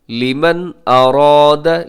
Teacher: लिमन पे नून साकिन में गुन्ना ना कीजिएगा क्योंकि यहाँ इजहार हो रहा है, क्योंकि नून साकिन के बाद हमज़ा हरूफ हलकी में है।